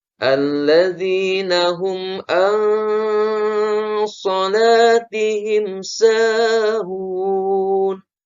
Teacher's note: Nun mati bertemu huruf shad, maka hukumnya adalah ikhfa, harus samar ya.